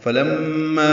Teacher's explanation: فلما میم مشدد پہ غنہ ہے ، ما الف مدہ ہے، جاءہم میں الف مدہ کے بعد